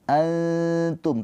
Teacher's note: nunnya ini dibaca dengan samar ditahan dua harakat sambil lidah kita mendekat ke huruf ta, ke makhraj huruf ta. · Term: ikhfa hakiki